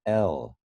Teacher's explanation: it's an apico alveolar liquid lateral liquid oh lateral meaning the air is coming out the sides of